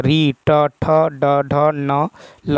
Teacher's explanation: मूर्धन्य जिन वर्णों का उच्चारण मूर्धा और जीभ के स्पर्श से होता है